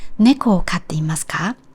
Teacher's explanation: The pitch accent of neko is high and low. And for katte imasu ka, ka is high. So while the intonation is gradually descending, there are still high and low part in each word.